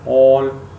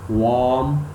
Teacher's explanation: This is long vowel. O, long vowel, lips are too much rounded.